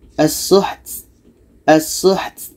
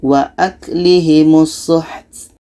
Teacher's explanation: Ta hamasnya mesti terdengar